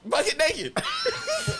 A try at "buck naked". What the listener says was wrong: Buck naked. No, you didn't. You said bucket.